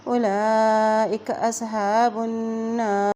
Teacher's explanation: اولئک اصحاب النار، با کی پیش کو نون کے ساتھ ملائیں گے، نون کے اوپر شد ہونے کی وجہ سے یہاں پہ نون پر غنہ بھی ہوگا۔